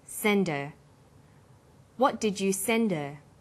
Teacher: send her send is the strong form and her is weak because her is not stressed we drop the initial H sound